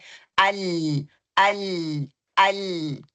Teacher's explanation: آگے سے زبان لگ رہی ہے طرف اللسان، اور پیچھے سے جو ہے زبان کی سائڈوں سے مخرج باہر آ رہا ہے